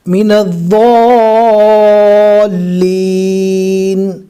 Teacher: لام سے ملانا ہے کیونکہ لام کے اوپر تشدید ہے، اور ضاد کو اچھے سے کھینچنا ہے اس لیے کہ اس کے اوپر بڑی مد ہے